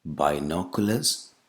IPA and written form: baɪˈnɒkuləz (binoculars)